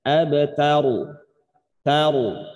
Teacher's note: Roknya tetap dibaca tafkhim tebal gitu.